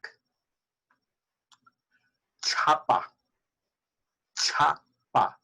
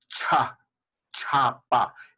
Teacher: I am expelling a puff of air